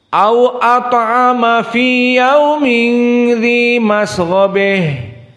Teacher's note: Maka ditambah dengan ha at-ta'nits, dibaca al-imalah al-kubra.